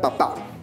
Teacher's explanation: está dentro del grupo de las palabras agudas, porque la mayor fuerza de voz se encuentra en la última sílaba